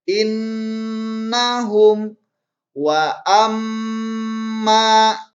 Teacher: Nah, ketika ada nun atau mim yang bertasydid ini disebut dengan gunnah. Lama bacaan gunnah pada mim dan nun yang bertasydid yaitu satu alif atau sama dengan dua harkat.